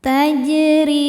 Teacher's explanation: Sebab huruf jim sukunnya sukun asli dan ada di tengah bacaan. Cara bacanya jim dipantulkan dengan pantulan yang kecil. Tajri huruf ro dibaca secara tarqik karena ro berharakat kasrah. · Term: qoqalah sugro